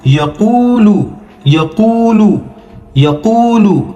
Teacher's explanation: دیکھیے وا مدہ کا ہے تھوڑا سا کھینچیں گے